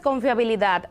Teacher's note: si la palabra tiene la fuerza o la sílaba tónica en la última como en el caso de confiabilidad es aguda